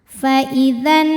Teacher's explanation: Karena nun bertasydid, cara bacanya didengungkan, jadi bunyi n tahan sampai ada suara masuk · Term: nun musyaddadah